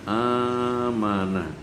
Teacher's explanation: Maka hamzah yang mati diganti dengan huruf mad sesuai dengan harokat fathah. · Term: ibdal